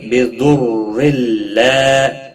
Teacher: ضاد حروف مستعلیہ میں سے ہے، پر پڑھا جائے گا۔